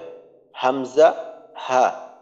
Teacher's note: এক নাম্বার মাখরাজ কণ্ঠনালী বা হলের শুরু হইতে উচ্চারিত হয়